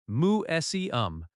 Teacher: Museum has stress on seum.